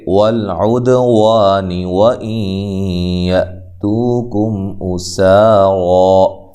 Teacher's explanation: حمزہ کو تحقیق سے پڑھنا ہے، سین کو باریک سیٹی سے اور را کو خوب موٹا کرنا ہے